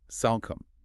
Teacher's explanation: You don't try to sound the E or make the O a long vowel. It's a simple short O sound.